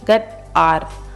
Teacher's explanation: says this particular word is equally stressed